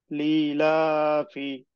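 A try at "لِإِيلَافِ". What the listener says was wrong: ই একটু টান হবে। হ্যাঁ, এই যে জেরে বাম পাশে যজমালা ইয়া, যখন জেরের বাম পাশে যজমালা ইয়া হবে তখনই টেনে পড়তে হবে, লি ইলাফি, লি ইলাফি,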